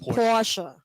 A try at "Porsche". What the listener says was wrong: Again, the E. Don't forget the E at the end.